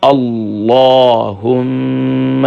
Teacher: دیکھیں اللہم، اکثر پڑھتے ہیں اللہم، اللہم نہیں ہے، اللہ کے لام کو منہ بھر کر پڑھیں گے۔